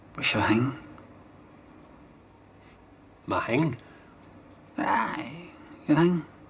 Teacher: Heard most notably in the What's Your Hang sketch, before the I sound, an unvoiced dental fricative that is a th sound, as in think or thing, can be replaced with an aspirated h sound, hence what's your hang rather than thing